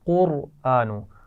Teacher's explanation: قرآن, قاف اور را دونوں موٹی پڑھی جائیں گی